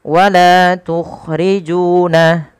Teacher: Panjangkan huruf la ju sepanjang dua harakat karena keduanya ada bacaan mad thabi'i